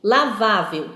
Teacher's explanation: aqui lavável então nós temos aqui última sílaba penúltima sílaba paroxítona essas são palavras onde a penúltima sílaba é a sílaba tônica é a sílaba forte